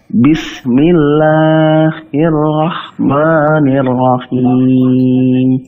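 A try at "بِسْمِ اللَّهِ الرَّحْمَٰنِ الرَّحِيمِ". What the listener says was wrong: Bismillahi. 2 harakat saja. Jangan terlalu panjang, jangan bismillahir, kepanjangan.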